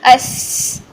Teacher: अगर हम अपने ज़ुबान के दरमियान को फ्रंट तालु की तरफ लेकर आएंगे तो थोड़ी सी हमारी सीटी की साउंड निकलेगी, जो कि सीन की तरफ चले जाएगी।